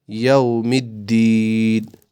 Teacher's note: یوم الدین میم دال سے کنیکٹ کرنا ہے ملانا ہے کیونکہ دال پہ تشدید ہے تو ہمیں یہ ملانا ہے.